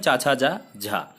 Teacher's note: तो चा वर्ग में चा छा जा झा, तो ये तालव्य व्यंजन हो जाएंगे